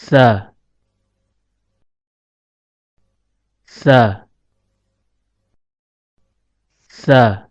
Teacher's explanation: Huruf sa keluar dari tempat pertemuan antara ujung lidah dengan ujung gigi seri atas.